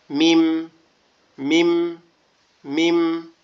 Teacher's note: দুই ঠোঁট একটু ফাঁক হয়ে আবার একসাথে লেগে যাবে।